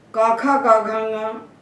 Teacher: काखा गाघांगा एक साथ क्यों बोले जाते हैं? क्योंकि पांचों का उच्चारण स्थान कंठ है